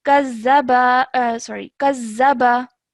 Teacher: this ba simple has a fathah on it. So do not stretch that for more than 1 second.